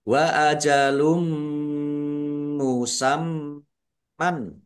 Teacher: Wa ajalum musam man dumah tanwin bertemu dengan huruf mim idgham big bununah masuk dengan mendengung yaitu langsung masuk ke huruf mim domah tanwinnya tidak dibaca dan mendengung yaitu mendengung mim. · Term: idgham bi gunnah